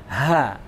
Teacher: maka nafasnya keluar. Ha, mengalir.